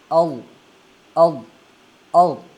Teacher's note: इसको हमने मोटा पढ़ना है और ऊंचा पढ़ना है।